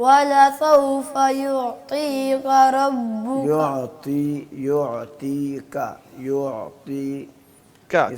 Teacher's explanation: کاف باریک ہے, را موٹا ہے